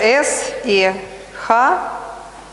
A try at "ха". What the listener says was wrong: So it is not S and H, but it is ha. It is and ha. Ha. So you should say S and ha.